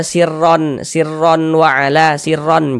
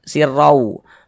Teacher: Jangan, tapi dibaca sirrau. Masuk melebur ke huruf waw. Kemudian digunnahkan, didengungkan. Jadi suaranya itu kita tahan, kita panjangkan sejenak.